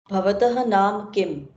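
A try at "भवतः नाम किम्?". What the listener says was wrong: Bhavatah nama kim. There's no naam, it is nama.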